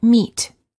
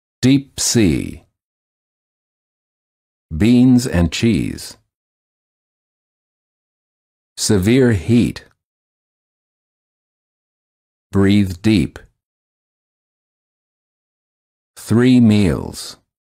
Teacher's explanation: The lips are slightly smiling, tense, and not rounded, and the tongue is tense. It is high and far forward near the roof of the mouth.